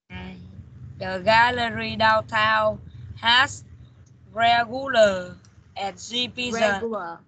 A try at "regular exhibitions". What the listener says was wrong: Regular. Đọc bình thường thôi, không có cần nhấn nhá quá mạnh đâu. Regular exhibitions.